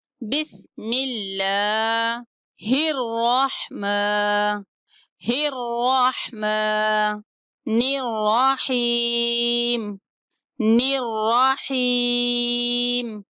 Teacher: اللہ کے لام کو باریک پڑھیں گے کیونکہ میم کے نیچے زیر ہے تو اس لیے اس کو باریک پڑھیں گے۔